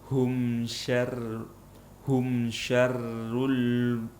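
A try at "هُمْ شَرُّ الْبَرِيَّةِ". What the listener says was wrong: Oh, tebal lamnya.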